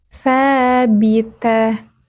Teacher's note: Sa ujung lidahnya sedikit keluar.